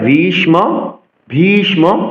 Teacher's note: ভি মহাপ্রাণ উচ্চারণ করতে হবে, দীর্ঘস্বর